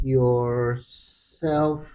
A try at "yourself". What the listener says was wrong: You said FUF and fix yourself. There's a Y there somewhere which is missing.